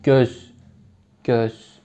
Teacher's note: Yani göz derken G zaten palatal olduğu için Ö de çok önde söyleniyor. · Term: G palatal